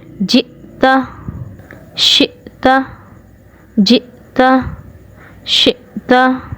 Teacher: حلق کے نچلے والے حصے سے، یعنی اقصائے حلق سے حمزہ ادا ہو گیا ہے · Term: حمزہ ساکنہ